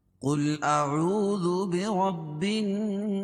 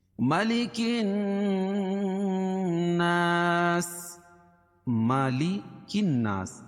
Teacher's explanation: نون مشدد میں غنہ ہوتا ہے، ایک الف کے برابر اس کو ناک میں آواز کو لے جائیں گے